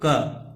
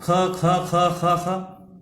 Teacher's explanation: जब हम ख बोलते हैं तो उसमें ज्यादा प्राणवायु बाहर निकालनी पड़ती है। का बोलने में आप देखेंगे का बहुत देर तक बोल लेंगे, अर्थात इसमें कम प्राणवायु लगानी पड़ती है। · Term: महाप्राण